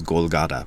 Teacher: the Japanese can't really do the th sound so it becomes golata